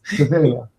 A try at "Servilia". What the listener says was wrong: No, there's an extra syllable in there. Sevilla would be fine.